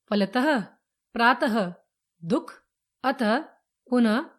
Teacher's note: विसर्ग, स्वर के बाद लगने वाले बिंदु विसर्ग होते हैं। इनका उच्चारण ह के समान होता है।